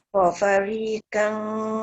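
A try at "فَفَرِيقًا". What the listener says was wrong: Bukan fafariqan. Fafariqan. Qaf tu. Qaf tak boleh jadi ka.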